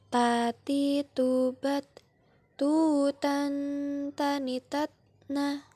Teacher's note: Lafalkan huruf Ta dengan menyentuhkan ujung lidah dengan gusi gigi seri bagian atas dengan mengalirkan sedikit nafas kita.